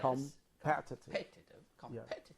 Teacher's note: So the strongest syllable is pet.